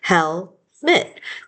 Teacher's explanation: That second syllable, we get lazy and turn our vowels into schwas a lot of times.